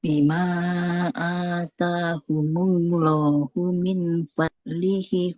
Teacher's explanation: Di lafaz Allah, Allahu haknya tidak panjang.